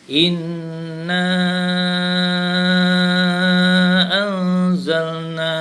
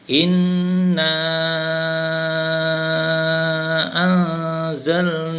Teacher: tanda mad yang panjang warna merah tu, mad jaiz munfasil. Mad jaiz dibaca 4 harakat.